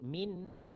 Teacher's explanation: Nun mati jumpa dengan hamzah. Nun mati berada di kawasan batang hidung kita. Kalau kita sebut min dekat batang hidung.